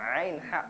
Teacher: ain ha tenggorokan bagian tengah